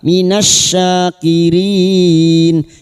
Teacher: lam takrif yang bertemu syin idgham syamsiyah